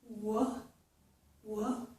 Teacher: And then I open my mouth and release the sound, W, W. My vocal cords vibrate when I make this sound. · To make that sound, I round and push out my lips like this. My tongue, the back of my tongue, is high in my mouth, in the back of my mouth. It doesn't touch the back of my mouth, but I raise it high. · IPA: / w /